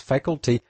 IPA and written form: f'ækəlti (Faculty)